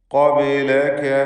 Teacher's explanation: ഖാഫിന് തഫ്ഖീം ചെയ്ത് സ്വരഭാരത്തോടെയുള്ള ശബ്ദം നൽകണം.